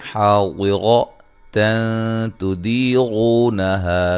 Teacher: نون تنوین کا اخفا ہے باریک. تو دی یا مدہ ہے.